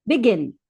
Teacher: The last syllable is more emphasized. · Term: last syllable is stressed